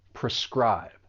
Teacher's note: this verb has two syllables and the stress is on that second syllable.